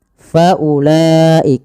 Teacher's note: Faulaik di sini tidak boleh dipanjang